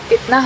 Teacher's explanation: konsonan labiodental tak bersuara F